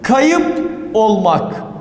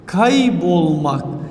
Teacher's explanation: Hem hece düşmesi hem de sert ünsüzlerin yumuşaması.